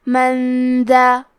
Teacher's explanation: دال حروف الاخفاء میں سے ہے تو ہم یہ حکم کو غنہ کے ساتھ ادا کریں گے۔